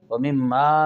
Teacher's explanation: وَيُقِيمُونَ الصَّلَاةَ وَمِمَّا، میم کا مشدد غنہ ہے، وَمِمَّا میں الف مدہ ہے، ایک الف کر کے پڑھیں گے۔